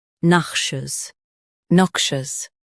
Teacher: Stress knock and keep shus soft.